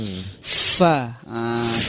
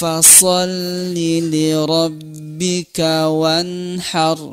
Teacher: ini masuk ke perut bibir bawah kita kita ya Fa ah kasih hembusan angin sedikit ya karena sifatnya adalah Hames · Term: huruf Fa